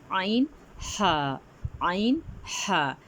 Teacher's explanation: یہ حرف حلق کے درمیانی حصے سے ادا ہوتے ہیں۔ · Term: عین اور ہا